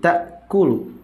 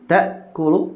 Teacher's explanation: hamzah itu syiddah, artinya tidak ada aliran suara ketika hamzah itu sukun, sedangkan ha ada aliran suaranya.